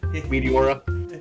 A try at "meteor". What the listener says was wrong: You really separated it into two words. I don't know, like, you have like an extra syllable. Hey, it's a meteor. You say like oar, like it's like a boat oar.